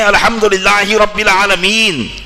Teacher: یہ عالمین میں خود ایک مد ہے جس کو کم سے کم 2-3 الف کی مقدار تو کھینچنا ہی ہوگا